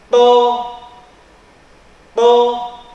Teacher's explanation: Jadi kalau tadi dua huruf ta dengan dal, lidahnya mendatar, ta dal. Kalau to, lidah kita itu sedikit menegang, lidah kita menegang atau terangkat ke atas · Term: huruf to